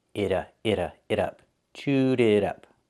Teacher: The T in it is a fast D.